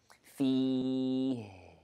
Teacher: here we have hams in the ha and we stop here.